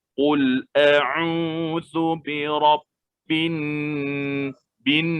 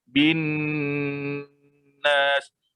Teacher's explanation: Dan kita sampaikan kepada makhrajnya di khayshum, di hidung, kena dengung. Qul a'udzu birabbin bin, terus kita transfer suara itu ke hidung.